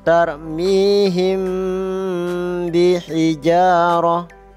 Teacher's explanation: Pada bibir ditahan 2 ketukan. Cara membacanya samar antara mim dan ba. Pada bibir ditahan 2 ketukan ya. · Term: ikhfa safawi